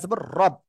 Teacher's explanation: রর উপরে জবর মোটা আওয়াজে পড়তে হবে।